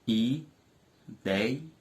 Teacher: A sílaba mais forte é dei, que é a sílaba tônica da palavra ideia. E também é uma palavra paroxítona.